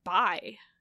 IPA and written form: bai (bye)